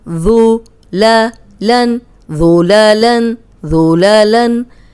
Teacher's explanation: अब ज़ाल नरम है, इसमें सीटी की आवाज़ नहीं आएगी, ज़ुलालन ये साउंड नहीं आएगी।